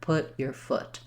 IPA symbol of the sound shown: ʊ